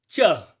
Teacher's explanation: च के उच्चारण के लिए च ध्वनि के साथ हमें अ स्वर ध्वनि का भी उच्चारण करना पड़ता है। इसलिए जो च है वो एक व्यंजन वर्ण है।